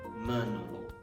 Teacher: the consonant T will be deleted and then will be replaced by consonant N, menolong.